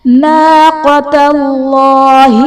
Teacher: اسم جلالت اللہ عز و جل کے لام سے پہلے حرف پر زبر ہے تو یہاں پر اسم جلالت اللہ عز و جل کا لام پر یعنی موٹا پڑھا جائے گا · وسقیاها میں قاف حرف قلقلہ ساکن ہے تو یہاں پر قلقلہ خوب ظاہر کریں گے